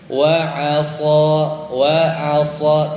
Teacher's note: yang bikin kedengaran tebal itu lidah kita tuh naik yang belakangnya jadi tebal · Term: Shad